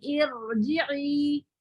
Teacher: یہ کسرہ کیونکہ عارضی ہے اس وجہ سے یہ اس کو باریک نہیں کر سکے گا، یہ را موٹا ہی رہے گا · را ساکن ما قبل کسرہ عارضی، را ساکن کو موٹا پڑھیں گے